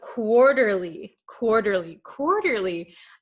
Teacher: quarterly this t is gonna become a flap t